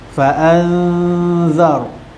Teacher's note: dengung dua harakat cara dengung Dia memasukkan huruf ikhfa ke dalam dengung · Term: ikfat Hakiki